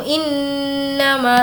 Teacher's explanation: नून पर तजदीद है, गुन्ना करेंगे